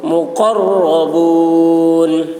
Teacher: قاف کی آواز موٹی ہوگی اور را پر ہوگی